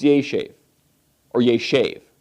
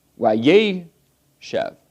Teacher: So normally it's yeshev, or yeshev, accent on the ultima, the final syllable. Here, because of the wow conversive, the accent goes to the preformative, wayeshev. And because of that, the tsere goes to segol.